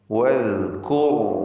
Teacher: വദ്കുർ റാഇൻ്റെ ഉച്ചാരണം പ്രത്യേകം ശ്രദ്ധിക്കുക, തഫ്ഖീം ചെയ്യണം. റാഇനെ തടിപ്പിച്ച് സ്വരഭാരത്തോടെ ഉച്ചരിക്കുക. റാഇനും അല്പം റഖാവ അഥവാ തവസ്സുത്ത് എന്ന സിഫത്ത് ഉള്ള അക്ഷരമാണ്.